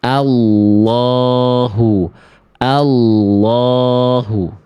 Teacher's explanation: Lamnya ditekan teman-teman. Lamnya ditekan karena ada tanda tasydid, jadi ditekan dulu. Ya, al nah ada penekanan dulu tuh, Allahu tidak sampai Allahu, Allahu, Allahu tapi Allahu.